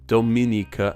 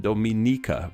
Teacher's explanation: With Dominicans from the Dominican Republic, the me syllable is stressed, while Dominicans from Dominica, the ni syllable is stressed, Dominica and Dominica respectively.